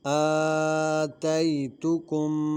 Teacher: آ میں کھڑی زبر ہے اس کو کھینچ کر پڑھیں گے، تی کی جو یا ہے یہ یا لین ہے اس کو کھینچیں گے نہیں